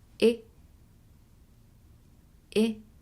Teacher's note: different from the long sound e which feels like it's coming from the top front part of our mouth this short one it actually comes from deep into our throat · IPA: [i]